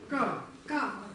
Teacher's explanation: Какой тон? Высокий. Произносим горлом. Идет вверх.